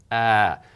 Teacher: In Arabic, long and short vowels mean exactly that. So an ah is held long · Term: long vowel ah